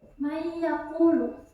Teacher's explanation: Ini karena ini memasukkan, jadi suara nun yang nggak kelihatan, tapi dimasukin ke iya. Jadi mayakulu, tidak mayakulu. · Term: idgham bila guna